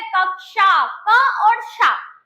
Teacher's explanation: क्या बोलते हैं हम अमूमन तो इसको क्या, क्षत्रिय का छा बोलते रहते हैं ना, लेकिन अगर करेक्ट प्रोनाउंसिएशन करेंगे मेरे प्यारे बच्चों तो क्या आता है, क और श का साउंड सुनाई देता है